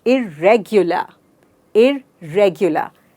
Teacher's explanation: रेग पे मैंने बहुत सारा जोर डाला है